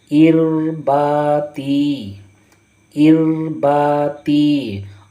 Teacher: यहाँ पर देखिए रा साकिन है और हमने पढ़ा है रा का कायदा में कि रा साकिन है, उससे पहले अगर ज़ेर है तो रा को बारीक पढ़ेंगे।